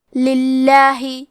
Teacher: لام کا حکم ہے ترقیق، لہذا ہمیں حرف اللام کو پتلی آواز میں پڑھنا ہے